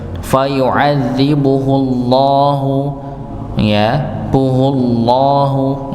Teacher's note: Jadi lafaz Allah kalau sebelum yang dhammah maka tebal.